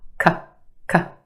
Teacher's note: Very quick, unemphasized, schwa sound.